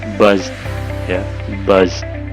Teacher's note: Buzz itu kan di dalam tenggorokan kita bergetar, maka dia d-nya dibunyikan seperti it, buzz, ya, buzz. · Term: voice